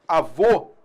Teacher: A gente tem um acento circunflexo, avô, para marcar um timbre fechado